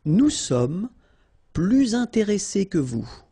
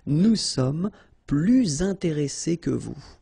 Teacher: you make this little link, little liaison between the two, so you hear a little bit this S